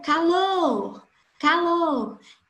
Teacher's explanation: O lo, ele tem uma intensidade muito maior do que o K. Então, o acento tônico ou acento prosódico de intensidade está na sílaba lo